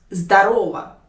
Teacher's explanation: You should put the stress on the second syllable. Здорово, on the second letter O.